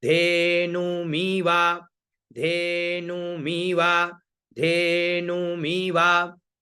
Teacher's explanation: फिर धेनु मीवा, तो धे का स्वर लगाना है, धे का स्वर हम कहां लगाएं, नीचे, क्यों, क्योंकि मी में हमें आना है बीच में, तो धे में चले गए हम नीचे, नु में ऊपर और मी में बीच में, धेनु मीवा, धेनु मीवा, धेनु मीवा।